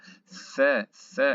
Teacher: Ici, on sort la langue sous les dents de devant, sous les incisives de devant. On sort la langue sous les incisives de devant, les incisives supérieures. On dira F, F, et on souffle.